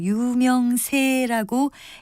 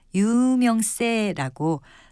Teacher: 예사소리로 발음하는 것을 많이 들을 수 있지만 유명세라고 된소리로 발음하는 것이 맞습니다